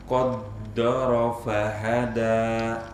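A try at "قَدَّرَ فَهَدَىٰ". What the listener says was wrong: Tipiskan dalnya, jangan do.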